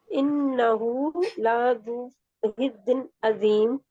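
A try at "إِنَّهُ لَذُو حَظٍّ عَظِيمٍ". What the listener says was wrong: لذو، ابھی آپ کا یہ لا لمبا کیوں ہوتا ہے؟ حظن عظیم، حظن، کیونکہ ذا جو ہے موٹا رہے گا، ذا ذا ذا،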